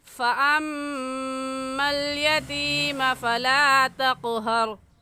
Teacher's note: فَأَمَّا میں میم مشدد ہے اور میم مشدد پر ہمیشہ غنہ کر کے پڑھتے ہیں، اس لیے یہاں پر ہم غنہ کریں گے اور ایسے پڑھیں گے فَأَمَّا الْيَتِيمَ فَلَا تَقْهَرْ وَأَمَّا السَّائِلَ فَلَا تَنْهَرْ.